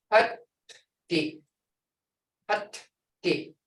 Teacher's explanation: when I say hut, my tongue is on my palate. You can feel that D sound.